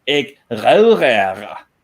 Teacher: they pronounce the R just like we do in Denmark, back at the throat